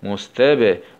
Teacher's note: باء سكون مع القلقلة